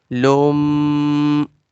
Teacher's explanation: Lam goes to the meme. We will do gunna sound there.